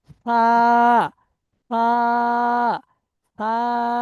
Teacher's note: সা, সা হচ্ছে না, হচ্ছে না। জিভের আগা, সা, সামনের উপরের দুই দাঁতের আগার সাথে লাগান